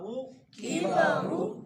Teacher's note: اب یہ را موٹی ہوگی، اس کی وجہ کیا ہے کہ را کے اوپر پیش ہے. را کے اوپر آپ نے پڑھا ہے کہ را پر زبریہ پیش ہو تو را کو موٹا پڑھیں گے، را کو موٹا پڑھیں گے.